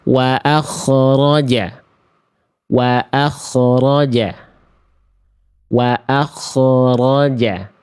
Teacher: Kesalahan yang berikutnya yang saya belum simpan di buku, yang baru saya temukan sering kali terjadi ketika bukunya sudah rampung, itu poin keempat. Ternyata huruf kho sukun juga banyak yang melafalkan memantul